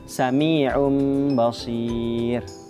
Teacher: Di iqlab ini cara membacanya itu bunyi nun sukun atau tanwinnya itu ditukar menjadi huruf mim disertai dengan gunnah atau dengung